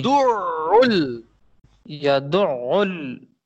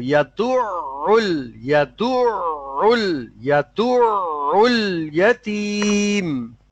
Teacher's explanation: عین کے اوپر تھوڑا سا رکیں گے ہاں، تشدید کی وجہ سے